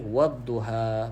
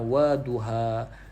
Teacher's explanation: wad tu adalah hukum alif lam syamsiah. Jadi kita kena baca, masukkan kepada huruf dha. Okey, wadduha, bukan waduha.